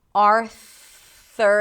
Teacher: stick the tongue out for the TH, it's a soft TH, just air, Arthur, and then pull it back to the R.